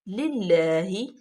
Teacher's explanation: اللہ کے لام سے پہلے زیر ہے، اس کو باریک پڑھیں گے، ہا کے نیچے زیر ہے، للہ، انتہائی حلق سے ہا ادا ہوگا۔